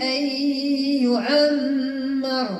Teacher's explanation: ان ان ان يعمر عندي نون مع الياء ادغام ناقص ا الميم فيها غنه مقدار حركتين الراء مفخمه